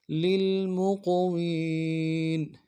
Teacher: میم کو قوف کے ساتھ ملانا ہے، قوف کو موٹا ادا کریں گے